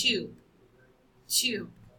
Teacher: you describe it as the voiced bilabial sound